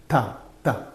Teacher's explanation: The tongue is touching the upper teeth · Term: dentals